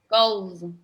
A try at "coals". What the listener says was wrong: Yes, very good.